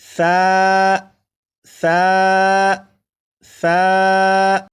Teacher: سا کو بھی ایک الف کے برابر کھینچ کر پڑھیں گے